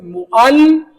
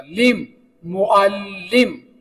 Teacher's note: لام کو 2 بار پڑھا جائے گا. ایک بار وہ پچھلے حصے کے ساتھ جیسے معل اور ایک بار وہ میم کے ساتھ لام کو پڑھا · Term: شد